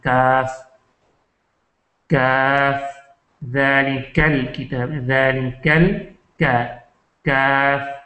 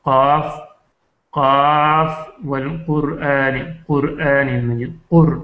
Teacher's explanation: کاف یہ جو ہے قاف سے تھوڑا سا باہر کی طرف منہ کی طرف جو ہے لسان بالکل زبان کی جو جڑ قریب یہ اوپر کے تالو سے بالکل جڑ اگر ٹکرا جائے تو اوپر جو کوا ہے تو یہاں سے قاف نکلتا ہے 2 نقطوں والا، اور جو تھوڑا سا آگے کو یعنی منہ کی طرف جب ہم آتے ہیں تو یہاں سے کاف نکلتا ہے.